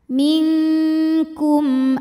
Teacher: mim sukun dibaca dengan jelas terang ya jadi bunyinya m dan tidak ditahan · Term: izhar syafawi